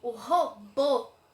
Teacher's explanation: A gente viu que a palavrinha robô, o robô, o bo é a minha sílaba que saiu com maior intensidade na minha pronúncia. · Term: sílaba tônica